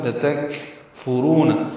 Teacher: تا باریک ہے، کاف باریک ہے، کاف ساکن ہے، اس لیے ہمس ہوگا